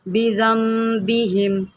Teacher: نون ساکن کے اوپر ایک چھوٹا سا میم ہے اور اس کے آگے جو ہے با آ رہا ہے، تو یہاں پر اقلاب ہو رہا ہے، یہاں پر ہم گننا کریں گے